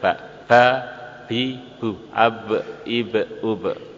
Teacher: ba kedua belah bibir ditekan akhirnya keluar dari baliknya